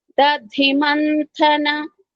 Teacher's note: ధి మహాప్రాణము వెంబటే థ కూడా మహాప్రాణము